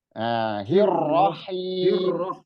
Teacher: H-nya tipis, ro-nya ditekan